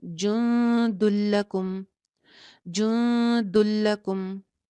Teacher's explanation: جو تنوین کے اندر چھپا ہوا نون ہے وہ ختم ہو جائے گا